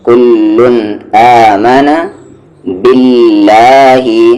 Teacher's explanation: اللہ کے لام کو لائٹ کریں گے، یعنی کہ پتلی آواز سے پڑھیں گے کیونکہ اس سے پہلے زیر ہے